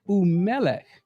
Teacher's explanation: The emphasis is at the mem, not the final letter.